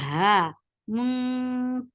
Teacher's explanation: Ha 2 counts long, should be from last part of your throat.